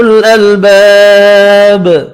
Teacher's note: الف مدہ ایک الف کی مقدار میں کھینچ کر پڑھیں گے. با ساکن پڑھا جائے گا وف کی صورت میں اور با ساکن پر قلقلہ بھی کریں گے.